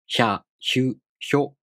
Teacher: these are pronounced with the [ç] sound plus [a], [ɯ], [o]. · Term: Yōon